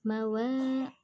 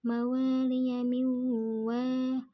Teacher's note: nun sukun bertemu waw, maka dibaca melebur dan mendengung atau idgham bi gunnah.